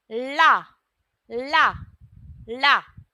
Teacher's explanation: जब हम ला का उच्चारण करते हैं तो जो हमारी जीभ है वो पीछे पलटती है। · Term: पार्श्विक व्यंजन